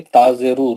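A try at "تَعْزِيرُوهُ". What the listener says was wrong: یہ تازیرو نہیں بولا، آپ کو پہلے بھی بول رہا ہوں، تازیرو نہیں ہے، زبر زید پہ اس کو ٹچ کرنا خالی ٹچ کرنا، تازیرو نہیں، تزیرو،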